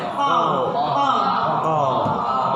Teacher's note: ketika menyebutkan huruf qaf, dia punya sifat isti'la. Dia tebal.